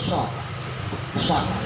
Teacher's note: Kalau shad ujung lidah ke papan urat gigi yang atas